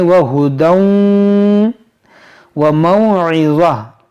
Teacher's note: یہ تنوین کے بعد واو یہاں پر ادغام کریں گے اور اس یا کو ہم نہیں پڑھیں گے, اس کو پڑھیں گے وہدی وموعظہ وموعظۃ للمتقین.